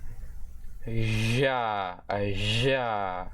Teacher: Now we have the voiced alveolo-palatal sibilant fricative consonant.